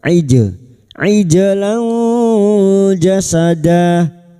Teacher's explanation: jim sukun yang mati asli di tengah kalimat qalqalah sugro. Jangan lupa dipantulkan. · Ijlan jasada lanja fathah tanwin bertemu jim ikfa hakiki. Kita samarkan bunyi fathah tanwin dan mendengung selama tiga harakat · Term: ikhfa hakiki